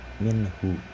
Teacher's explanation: izhar itu dibacanya jelas, jadi minhu, seperti itu, tidak ada dengung atau tidak ada dileburkan